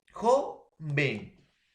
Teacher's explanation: Lleva la mayor fuerza de voz en la penúltima sílaba